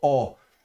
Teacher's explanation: un mélange hybride entre le a et le o donc plutôt or.